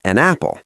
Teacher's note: A native speaker does not say an, pause, apple. We push the N sound onto the A. It becomes an apple. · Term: consonant to vowel linking